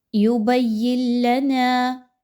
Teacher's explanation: نون الف زبر نا الف مدہ ہے، 2 حرکت کے برابر اس کو پڑھیے۔